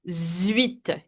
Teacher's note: 18 will be, here we do something that we call la liaison. We connect the X with the U, with this vowel, and it will have the sound of Z.